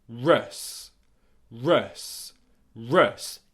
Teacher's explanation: the last two sounds in this word are the schwa sound followed by the S sound to finish it off.